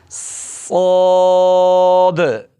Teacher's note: اس حرف کو موٹا کرنا ہے، اس میں سیٹی بجانی ہے، اور یہ پر حرف ہے، منہ کو کھول کے پڑھنا ہے۔ پہلے سیٹی آئے گی پھر موٹا ہوگا یہ حرف، اس کی آواز میں منہ کو کھولنا ہے، پر کر کے پڑھنا ہے، صاد۔